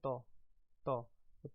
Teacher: तौ में हमारा जो जीभ है वो दांतों पे टच होती है। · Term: दंत्य वर्ण